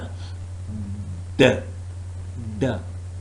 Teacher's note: the tongue is completely blocking off airflow through the mouth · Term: oral stop